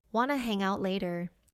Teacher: In fast English, do you want to becomes wanna.